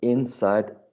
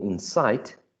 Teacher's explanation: we may be using a noun stressing the first syllable and a verb stressing the second one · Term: lexical stress